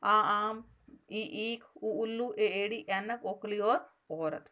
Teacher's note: इनके उच्चारण में हस स्वर की तुलना में बहुत अधिक समय लगता है। ये होते हैं दीर्घ स्वर,